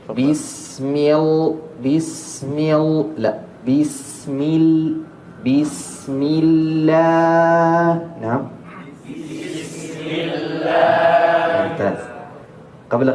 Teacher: Pada saat di bismillah lam di sini tipis muraqqaah